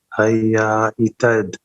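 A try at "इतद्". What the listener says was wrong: Say it again. What is the last two words if you combine them? There's no A. Yetat. Yetat.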